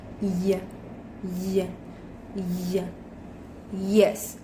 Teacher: With manner of articulation, approximant, and place of articulation, palato-alveolar.